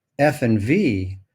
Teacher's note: the constriction is made with the upper teeth and the lower lip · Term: labial dental sounds